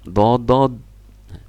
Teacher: Nah, kalau do tidak ada qalqalah seperti dadad.